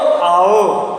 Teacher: ओ आओ, ये हमारे कंठ और ओष्ठ से निकलते हैं। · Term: कंठ और ओष्ठ स्वर